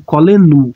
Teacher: Então, o acento tônico cairia no sufixo pronominal. Mas a seta está aqui para indicar que exatamente eu vou pronunciar como coleno.